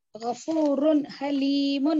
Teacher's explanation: रे के ऊपर दो दो पेश है और उसके बाद हरूफ हल्की है, इसलिए इसको भी इजहार करके पढ़े